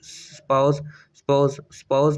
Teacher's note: इसमें जो ऊ साउंड है एस के बाद ये जो है थ्रो द एलिजन डिसअपीयर हो जाता है